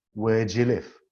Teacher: the two intermediary words do the auxiliary verb and you the subject pronoun have also been condensed squashed by the two content words